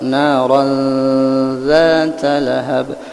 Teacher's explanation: Kalau bila menemui huruf ikhfa maka mendekati kepada huruf nang ikhfa tersebut. Ran itu tanwin bertemu dengan zal, maka tanwin itu mendekati kepada huruf zal.